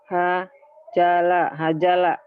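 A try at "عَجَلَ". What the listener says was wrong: Ini huruf apa? Ain. A. Bukan H. Dibaca gabung ini mah. Ajala.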